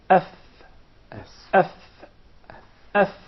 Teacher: What works with us is the edges of the top 2 front incisors, resting on the middle or the inside of the lower lip. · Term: fa